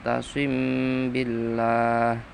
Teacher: Nomer dua asim billah bacaan ikhfa syafawi karena mim mati bertemu ba ikhfa samar